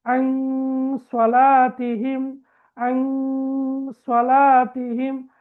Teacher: எனவே நாங்கள் சுக்கூன் செய்யப்பட்ட நூனை மறைத்து ராகம் எடுத்து ஓத வேண்டும் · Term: இஹ்ஃபா